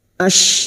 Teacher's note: huruf syin makhrajnya ada pada wastul lisan yaitu Tengah lidah